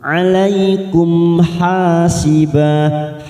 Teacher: Alaikum mim sukun bertemu ha idhar syafawi, kita baca jelas tanpa mendengung.